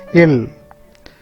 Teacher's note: The middle of the palate is touched by the tip of the tongue. It produces a sound il.